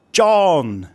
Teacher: a falling tone is as if you're calling someone from a long distance. It starts off high and then it drops.